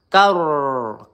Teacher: di sini rnya tebal ya karena sebelumnya berharakat fathah. Karro kar ditekan juga ada tasdidnya karro tun.